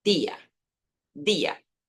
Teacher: Siempre que aparezca la D con la I, vas a sonar di, no G